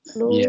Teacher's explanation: Lu hukumnya tabi'i karena huruf lam berharokat dhammah bertemu dengan waw sukun dibaca panjang 2 harokat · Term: mat tabi'i